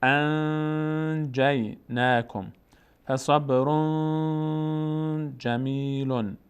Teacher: مثال جیم، وقتی بعد از نون ساکن جیم بیاد، مثلا اینجا نون ساکن برای جیم آمده، نه حروف فرقی است، نه یرملونه، نه با. اخفا میشه، صدا میره در بینی. مقداری هم روش نگه میداریم، توقف میکنیم. انجیناکم فصبر جمیل.